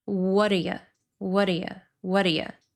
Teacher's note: He's not saying, what do you? He's reducing all of these vowels to schwa.